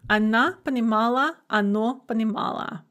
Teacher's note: endings for ana and ano sound the same ana mala mala because we have an unstressed a or o at the end and they're both basically going to be pronounced uh · because the endings are unstressed, the endings for она and оно sound the same.